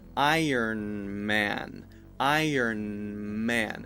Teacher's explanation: you just bring your lips together to begin the mmm sound of Iron Man